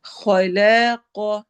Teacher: خا اور قاف دونوں موٹے پڑھے جائیں گے